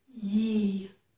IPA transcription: ji